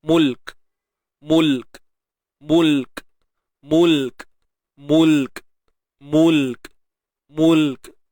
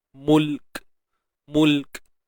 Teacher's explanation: Tahan dulu, syiddah. Tahan suara dulu. Kemudian baru lepaskan hams. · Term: sifat hams